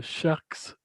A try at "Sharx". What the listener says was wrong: Sharks avec un X, Sharks,